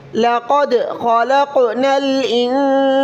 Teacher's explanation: قاف کو موٹا کریں اور دال پر تھوڑی سی حرکت دیں